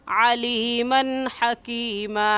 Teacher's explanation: علیمن کی تنوین پر ہم غنہ نہیں کریں گے، کیونکہ تنوین کے بعد حروف حلقی میں سے حا آ گیا ہے، اس وجہ سے اس تنوین پر ہم غنہ نہیں کریں گے.